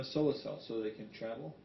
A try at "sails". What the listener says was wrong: Sails. You're saying cells. That's what confused me. Yeah, sails.